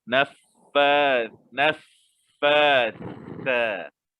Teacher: Maknanya fa baca 2 harakat, sa kena 2 harakat. Sa tu jangan tertukar dengan sin. Kat situ huruf sa. Kena keluarkan lidah.